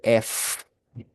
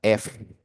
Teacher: Fíjense que usted va a colocar sus dientes sobre los labios y va a dejar que pase un flujo de aire.